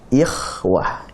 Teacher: Apakah ini tipis? Tidak. Ini bukan tipis. Ini tebal. Tafkhim, tapi tafkhimnya adalah tafkhim nisbi. Ya. Dia lebih dekat kepada tipis tapi bukan tipis.